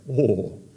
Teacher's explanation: There's this thing, a habit that Japanese people do when something is really impressive or surprising, and it's this low-pitch, guttural thing